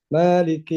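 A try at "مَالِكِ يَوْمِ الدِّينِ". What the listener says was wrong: dipendekin meme-nya. Meme-nya pendek. panjang kelihatan.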